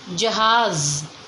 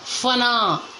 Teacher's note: ज फ बोलते समय हमारे मुंह से तेज हवा निकलती है और ये जो होठ है वो आपस में नहीं जुड़ते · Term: आगत ध्वनि